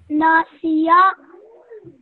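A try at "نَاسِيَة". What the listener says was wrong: This ya over here can be prolonged for a bit longer, so 2 seconds.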